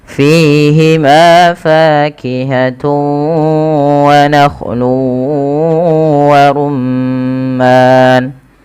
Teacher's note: Panjangnya berapa harakat untuk mad arid di sukun? yaitu boleh dua harakat, boleh empat harakat, boleh pula enam harakat.